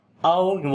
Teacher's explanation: او واو یہاں پر لین ہے نرم پڑھیں گے